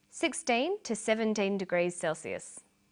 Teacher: notice that the two is unstressed